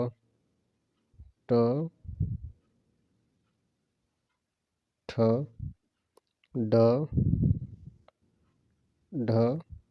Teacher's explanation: तालू के मध्य भाग और जीभ की उल्टी हुई नोक के निचले भाग से स्पर्श होकर उच्चारित होते हैं ऐसी स्थिति में उत्पन्न ध्वनि को मुर्धन्य कहते हैं तो सही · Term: मूर्धन्य व्यंजन